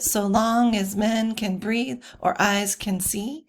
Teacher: they kind of keep that sing songy unstress stress syllable as they read Shakespeare's lines